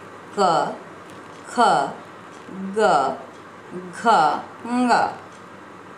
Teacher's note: जब हम इन व्यंजनों का उच्चारण करते हैं तब वायु कंठ से निकलती है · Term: क वर्ग